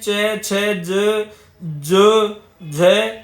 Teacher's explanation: तालू मुह के भीतर की छत का जो पिछला भाग होता है वहां से इनका उच्चारण होता है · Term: तालव्य